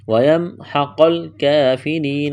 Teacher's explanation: وَيَمْحَقَ الْكَافِرِينَ قاف کو موٹا کرنا ہے، اس کاف کو باریک کرنا ہے، کڑا زبر ہے، را کو باریک کریں گے، را کے نیچے زیر ہے